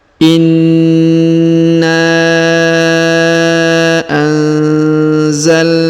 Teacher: huruf nun sukun yang ini bertemu dengan huruf za, maka didengungkan dan disamarkan